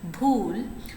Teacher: So, in Urdu, we are having the feature of voicing plus aspiration together. You are having b voicing feature plus h aspiration feature together.